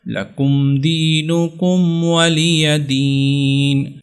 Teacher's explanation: اکثر لوگ اس کو پڑھتے ہیں ولی یا دین، ولی لی کو وہ لمبا کر لیتے ہیں، تو لمبا نہیں کرنا